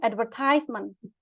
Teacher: Stressnya tuh di bagian tehnya.